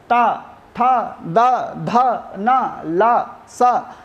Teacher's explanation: अपनी जिह्वा को दांतों में स्पर्श करना पड़ता है